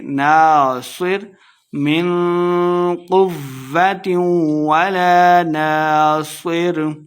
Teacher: ولا ناصر الف مدہ ہے، صاد کو موٹا پڑھیں گے